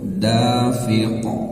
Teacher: qof dimatikan bagian dari huruf Qalqalah yang ketika mati ataupun dimatikan maka dia harus memantul dan jaga ketebalan suaranya